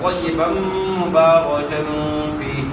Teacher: یہاں جو با کے اوپر دو زبر کی تنوین ہے، دو زبر کی تنوین کے بعد حروف یر مرو میں سے میم آ گیا تو یہاں ادغام مع الغنہ ہوگا